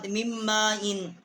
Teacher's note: کو میم کے ساتھ مشدد کیا ہے، اور میم الف ما اس کے اوپر بڑی مد ہے، اس کو ہم نے 4 الف جتنا جو ہے اس کی آواز جو ہے وہ ہم نے بلند کی ہے